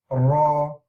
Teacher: the front part of your mouth is the raw a raw the raw is pronounced by the tip of the tongue touching the front area of the palate